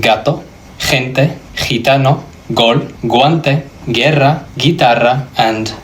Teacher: This is giving me the U sound and the hard G. And I'm having the E vowel sound.